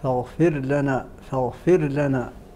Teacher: الراء هنا مرققه للجميع في فاغفر لنا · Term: ترقيق الراء